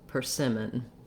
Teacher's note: correct stress pattern and then our letter o says vowel schwa so it sounds like per sim with the length on the sim syllable